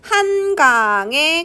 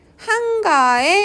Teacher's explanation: 받침이 이응으로 끝나면 위로 안 올라가요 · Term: 연음의 예외